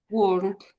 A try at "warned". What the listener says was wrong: It's only very slight, but I think you when you see an R, you want to try to pronounce it.